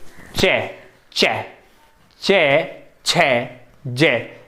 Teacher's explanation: तालु से जीभ टच होती है तो ये तालु से आती है